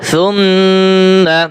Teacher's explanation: এই যে মিমের উপরে তাসদিদ রয়েছে, ওয়াজিব গুণ হবে।